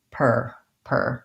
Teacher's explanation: it written like this with an er in the first syllable so even though there's an ar we say that ar as an er sound